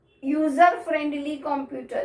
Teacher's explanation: U is a vowel, but its sound is Y.